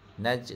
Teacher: Okey, jadi huruf jim ni huruf qalqalah, jadi dia kena lantun sikit.